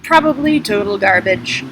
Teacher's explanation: When I do vocal fry like that, like I'm a 20-something moron, you can't really hear me, can you? It doesn't make any sense.